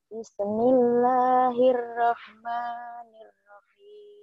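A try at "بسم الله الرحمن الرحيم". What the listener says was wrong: Kok ada bisa sih? Bisa, bis, jangan bisa. Ada bisanya itu. Bis, jangan bisa.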